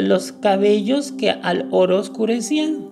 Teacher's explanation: pronunciar en una sola sílaba la vocal al final de una palabra y la vocal inicial de la siguiente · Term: sinalefa